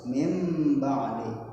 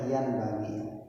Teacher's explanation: Jadi merubah bunyi huruf nun sukun menjadi mim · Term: iqlab